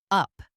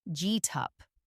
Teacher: If you say each word by itself, you hear get and then up. But in natural talk, the T sound often joins to the up, sounding like G-tup. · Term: connected speech